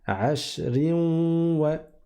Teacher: Il y aurait eu ici un idram entre le tanwin et le waw, et donc j'aurais dit ashrin wa.